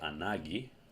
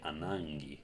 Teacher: Here we have gamma kappa. You can pronounce gamma kappa either as a g or as ng.